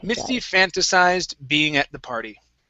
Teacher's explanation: stress at the very beginning misty fantasized being at the party being at the party okay